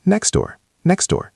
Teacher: So in natural speech, we delete the T. We just say next door, next door.